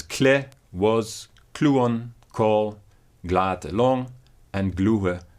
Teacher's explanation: Compare the examples given here of the words kle, was, kluon, call, glate, long, and gluhe, tongue or language, where the cluster kl and gl is preserved in the old phase and has been palatalized to ch or j in the modern language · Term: clusters kl and gl